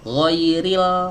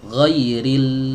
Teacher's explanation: huruf lam itu bukan keluar dari ujung lidah, ujung saja enggak, tapi disertakan juga pinggirnya.